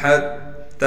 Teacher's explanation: یا کو بغیر کھینچے پڑھنا ہے